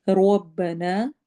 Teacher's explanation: رو کو موٹا کرنا ہے، نا میں الف مدہ کرنا ہے، یعنی 2 کاؤنٹ لمبا۔